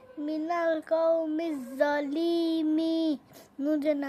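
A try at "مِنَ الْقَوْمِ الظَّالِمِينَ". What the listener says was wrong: মাশাআল্লাহ, লি টান দিবা না, হ্যাঁ। মিনাল কওমি র টান হবে, মিনাল কওমি যালিমিন, মিনাল কওমি যালিমিন।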